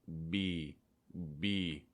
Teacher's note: The only difference for the B sound, making sure that you get that vibration in your throat.